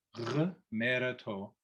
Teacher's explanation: GH is the voiced equivalent of the KH sound. So instead of the simply guttural KH sound with air, it's made the same way, but with voice behind it.